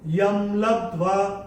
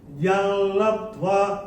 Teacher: तो अगर हम म बोलते हैं तो वो नियम के हिसाब से सही है ही, बट आधा ल भी इस्तेमाल कर सकते हैं।